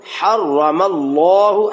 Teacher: لفظ اللہ سے پہلے زبر آ جائے تو لفظ اللہ کو موٹا کیا جاتا ہے